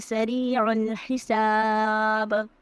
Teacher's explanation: سریع میں را کو ہم باریک پڑھیں گے، عین کی آواز کو ہم حرک سے ادا کریں گے، ہا کی بھی آواز جو ہے وہ حرک سے ادا ہوگی۔